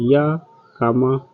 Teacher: इसको बोलने में मुख द्वार बहुत सकरा हो जाता है, हवा स्वर के समान मध्य से निकल जाती है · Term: अर्ध स्वर